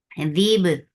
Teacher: Ba will get sifa of qalqala. And this qalqala is very crisp because there is no flow of sound or breath here